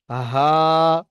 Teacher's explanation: গম্ভীর আওয়াজ, হা, একদম বুকের কাছে উচ্চারণ হবে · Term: হামজা